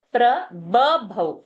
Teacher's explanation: First ba is alpa prana, second is a mahaprana